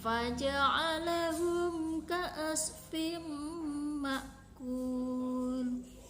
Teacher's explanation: idhar safawi karena mim sukun bertemu dengan kaf dan cara membaca mimnya ini adalah jelas · idgham bigunah karena kasrah tanwin bertemu dengan mim dan cara membacanya adalah berdengung dan ditahan 3 harokat